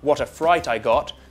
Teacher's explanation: it's quite fluid one word links to the next